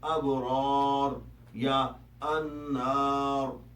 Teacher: اگر کسی لفظ کا آخری حرف را ہو اور اس پر قارئ نے رکنا ہو، یعنی را ساکن ہو اور اس سے پہلے الف ہو، تو تب بھی را کو موٹا ہی پڑھا جائے گا